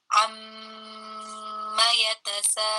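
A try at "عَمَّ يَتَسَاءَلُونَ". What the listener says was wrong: Ya, huruf A jangan masuk ke ain ya Bunda. Alun, dibuka mulutnya.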